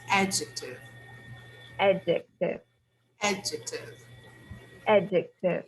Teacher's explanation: the word adjective the stress is on the first syllable